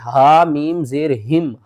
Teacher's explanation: تو یہاں پر ہم کیا کریں گے ہا کو دوسری میم کے ساتھ ملائیں گے ہا میم زیر ہم. ہا حروف حلقی میں سے ہے حلق کے سب سے نیچے والے حصے سے ادا ہوگا